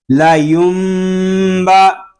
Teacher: نون ساکن میں اقلاب اس لیے ہو رہا ہے کہ نون ساکن کے بعد حرف با آ گیا ہے